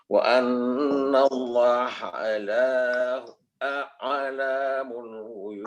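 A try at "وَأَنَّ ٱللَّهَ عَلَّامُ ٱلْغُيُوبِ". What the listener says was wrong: Allah tasdid dulu. Wa annallaha allamul pendekkan. Wa annallaha-nya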